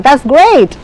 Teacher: You see something and you make a good comment and the intonation goes high